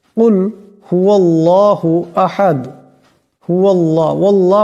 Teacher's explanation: হুয়াল্লাহু আহাদ হুয়াল্লাহ পড়তে হবে আল্লাহ পড়লে শুদ্ধ হবে না এবং আল্লাহর লামকে মোটা করে পড়তে হবে